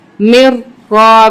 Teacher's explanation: میم کو را کے ساتھ سختی کے ساتھ ملائیں گے کیونکہ را مشدد ہے